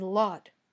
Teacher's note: the tip of your tongue touches the top of your mouth but the sides of your tongue stay open the air comes out around the sides of your tongue very